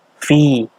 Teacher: Di sini hukumnya adalah mad tabi'i atau mad asli. Artinya dibaca panjang. Panjangnya 2 harokat. Dibaca panjang 2 harokat, namanya mad tabi'i atau mad asli, itu sebabnya adalah ada ya mati, sebelumnya ada huruf fa yang berharokat kasroh.